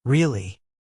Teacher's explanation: If you say it with rising intonation, rail o y it means surprise like are you serious? If you say it with falling intonation, really it means agreement like yes, that's true.